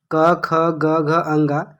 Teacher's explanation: जैसे क वर्ग एक वर्ग है, क ख ग घ अंगा, जिसका उच्चारण स्थान कंठ है